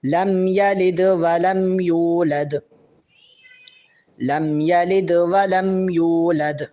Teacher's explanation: لم یلد میں جو دال ہے اس پہ بھی قلقلہ ہوگا